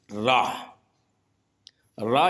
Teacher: इन व्यंजनों के उच्चारण में जीभ तालु से लुढ़ककर स्पर्श करती है। जैसे कि ये रा, रा जो है वो लुंठित व्यंजन की श्रेणी में आता है।